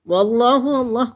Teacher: اللہ کو پر پڑھیں گے کیونکہ اس سے پہلے لفظ، لام سے پہلے لفظ کے اوپر زبر ہے تو اللہ پر پڑھا جائے گا.